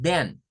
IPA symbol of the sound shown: ð